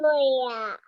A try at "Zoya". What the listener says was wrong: Zoya. No Joya. It is Zoya. My name is Zoya and my name starts from Z sound.